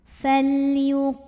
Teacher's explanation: Karena ada alif yang sebelumnya didahului fathah, maka cara bacanya qaf dipanjangkan 2 harokat saja.